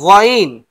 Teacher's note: গইন কোথা থেকে উচ্চারণ হয়? গলার ভিতর থেকে, হলক বা কণ্ঠনালীর ভিতর থেকে।